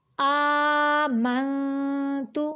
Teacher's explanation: آمنتو، حمزہ کھڑی زبر آ، کھڑی زبر کھڑی زیر الٹا پیش جو ہے، اس کی ادائیگی 2 حرکات عربیہ جتنی ہوتی ہے۔ آمنتو، یہاں نون پہ اخفا ہو رہا ہے، تو ہم اس کی آواز کو چھپا کر ناک سے نکالیں گے۔